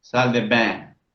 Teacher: Tenemos una A y una I que se pronuncian como una E bien abierta. Es la E, repito, más abierta que pronuncia un francés.